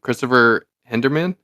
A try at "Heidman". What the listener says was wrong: Heidman. There's no R in there, right? Heidman. Yeah, Heidman. or Heidman.